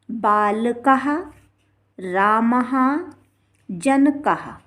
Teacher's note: तो इस तरह से जब विसर्ग लगा रहेगा तो इसका उच्चारण हा होगा, हा। बाल कहा। इसी तरह से राम में विसर्ग लगा हुआ है तो रामः।